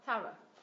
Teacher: mình nhấn vào tiết thứ nhất này, thorough và âm thứ hai là schwa sao.